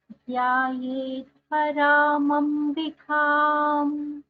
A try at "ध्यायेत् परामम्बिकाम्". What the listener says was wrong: ध्यायेत् परामम्बिकाम्. So the first letter ध्यायेत् ध is a mahaprana. It should be heard clearly. ध्यायेत् परामम्बिकाम्.